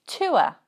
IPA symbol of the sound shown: ʊə